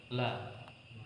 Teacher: al-istifal yaitu tidak mengangkat pangkal tenggorokan, tidak mengangkat pangkal lidah